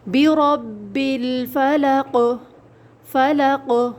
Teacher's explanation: اب یہاں پہ آ رہا ہے قوف، لیکن جب ہم ساکن کر دیں گے وقف کی حالت میں تو قوف کی آواز پلٹ کر آئے گی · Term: حروف قلقلہ